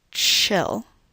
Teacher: If you produce this word very slowly, you may notice that you do in fact move through the sounds t and sh when you produce this initial consonant.